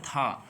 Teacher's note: तो था वर्ण का उच्चारण स्थान होता है दंत। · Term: दंतव्य